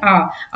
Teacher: आ आ बोलते समय हमारा मुंह पूरा खुला होता है। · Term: विवृत स्वर